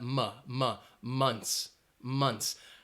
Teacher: that o is more of a schwa sound